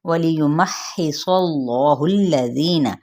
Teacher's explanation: واو ہونٹوں کی نا تمام گلائی کے ساتھ ، وَلِيُمَحِّصَ اللَّهُ الَّذِينَ، یا کی پیش کو لمبا نہیں کریں